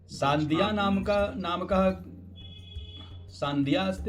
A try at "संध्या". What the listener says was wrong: संध्या वर्तते, सान्ध्या नहीं वर्तते।